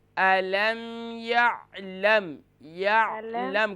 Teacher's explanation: جب یا کو عین سے جوائن کریں گے نا تو یہاں قلقلہ بالکل نہیں پیدا ہونا چاہیے